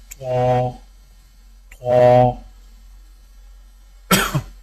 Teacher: زبان کی نوک کو سامنے والے اوپر کے 2 دانتوں کی جڑ سے لگا کر اور زبان کے پچھلے حصے کو تالو کی طرف بلند کرتے ہوئے موٹی آواز میں پڑھیں